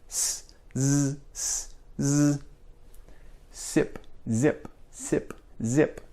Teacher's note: you want to have as little air sound as possible it should be as much vibration as possible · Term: voiced sounds